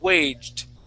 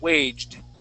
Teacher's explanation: it's a slight T, but it is a D sound. Waged. Okay, but it comes off as a T.